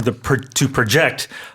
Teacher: the verb form, to project, the intonation being on the second syllable